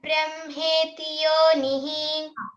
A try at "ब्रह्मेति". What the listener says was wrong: బ్రా అంటానికి ప్రయత్నించాలి బ్రే అనద్దు పరబ్రహ్మేతి బ్రహ్మేతి ఆ